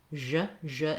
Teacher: it's basically like an SH sound, like the sh sound, but my voice is on. So starting with a word like sh, she, then you turn your voice on. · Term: zh sound